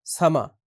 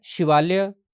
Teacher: जब आखिर में यो हो तो डोगरी भाषा में य का लोप हो जाता है